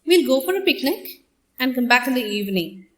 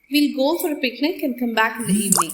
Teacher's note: So, I made a pause after saying, we'll go for a picnic. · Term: tone group boundaries